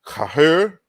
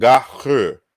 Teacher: he reconstructs two forms of the word. Kahur, the voiceless form, and gahur, the voiced form.